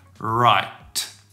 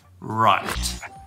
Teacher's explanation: it's important to get that T and make sure there's some breath coming out when you say right. Don't say rye, rye.